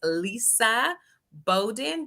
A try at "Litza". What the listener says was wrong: Litza. T in the middle, girl.